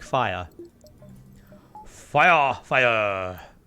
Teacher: thing about being British is you don't normally pronounce R